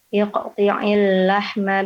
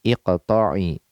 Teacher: kasrah pada ta ya, yang benar fathah pada ta-nya